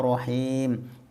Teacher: bacaan Mad Arid lissukun Mad thobii bertemu huruf hidup dibaca waqaf panjangnya sempurnanya adalah 3 Alif atau enam harokat